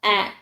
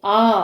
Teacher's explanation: குறில் எழுத்து பார்த்தீங்கன்னா ஒரே மாத்திரைதான் நெடில் எழுத்துக்கள் பார்த்தீங்கன்னா ரெண்டு மாத்திரை